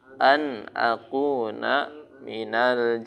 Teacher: Nunnya enggak boleh dibaca dengung. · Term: Idhar